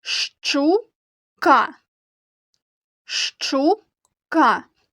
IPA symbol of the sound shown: шч